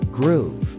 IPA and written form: ɡruːv (Groove)